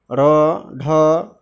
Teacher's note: अब है उत्क्षिप्त वर्ण। जिन व्यंजनों के उच्चारण में जिह्वा मूर्धा को स्पर्श कर तुरंत नीचे गिरती है उन्हें उत्क्षिप्त वर्ण कहते हैं